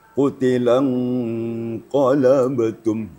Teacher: Ini samaran nun matinya sudah mengarah kepada huruf qaf. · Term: ikhfa hakiki